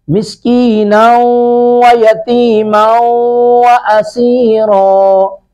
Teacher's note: اسیرا، یہاں پہ سین پر سٹی کی آواز پھر آئے گی، را کو پر کر کے پڑھیں گے